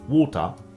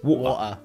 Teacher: the T in water, as well as the T in Gretel, is generally pronounced as a glottal stop in Cockney English